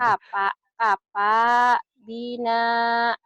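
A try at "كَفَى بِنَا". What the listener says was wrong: Orang Sunda kapa. Kafa F ya. Sama kayak saya. Nggak bisa F. Kafa. Kafa bina. B-nya pendek.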